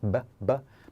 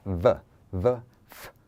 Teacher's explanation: a letter v may be pronounced like the letter B so we don't want to use the lips BB but the teeth VV FF